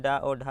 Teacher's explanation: उत्क्षिप्त मतलब जिनके उच्चारण में जीभ ऊपर उठकर झटके के साथ नीचे आए